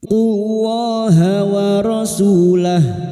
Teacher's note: Qullaha, lam jalalah yang didahului dhammah. Lam jalalah dibaca tafkim